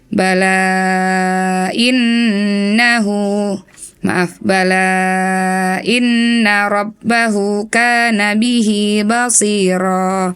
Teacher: ada mat tabi'i bertemu dengan hamzah jadi panjang, dibaca mat jaiz ya.